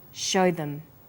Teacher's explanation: also uses the words show them. Here, show is stressed and them is unstressed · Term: vowel and consonant linking